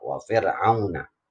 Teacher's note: Jadi bacanya tipis ro tarkik.